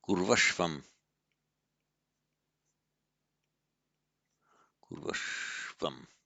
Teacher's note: both a short u and a long u become a v before a dissimilar vowel. The r all becomes just a r.